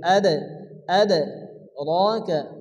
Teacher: দাল হচ্ছে কলকলার অক্ষর, এই জন্য এখানে হালকা ধাক্কা দিয়ে পড়তে হবে। আদ আদ রাকা, তার উপরে খারাজ জবর আসছে, এক আলিফ পরিমাণ টান দিয়ে পড়তে হবে।